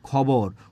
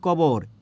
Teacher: খবরে ছিল মহাপ্রাণ খ, কিন্তু আমি এখানে খবরে কি বলছি, কবর। এটাকে আমরা বলছি এই ককে বলছি আমরা অল্প প্রাণ।